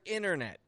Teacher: the te disappears from the word internet